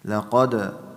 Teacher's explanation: قاف is heavy and dal is قلقلة